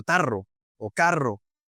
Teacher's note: ese sonido vibrante de la R no está en el inglés